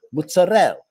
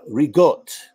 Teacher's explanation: you completely erase the a at the end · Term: final syllables are deleted